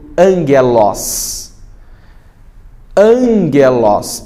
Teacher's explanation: essa letra, o gama, acaba tendo o som de N.